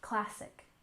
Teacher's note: classic literature with a stress on the first syllable